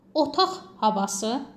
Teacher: Kar tələffüs olunacaq. Otaq havası yəni ikinci tərəf samitdən başlayır deyənə kar tələffüz olunacaq.